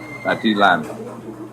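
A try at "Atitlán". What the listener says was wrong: Lake Atitlan. If you pronounce it Lan again, Lake Atitlan. Like it's Lake Atitlan, but it's Lake Atitlan. It's just like the saliva in the back of my mouth.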